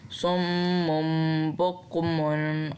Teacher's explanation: नून की आवाज़ को मीम में बदल देना है।